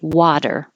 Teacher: Yes, the T sounds like a D or technically a flap, but it sounds like a D.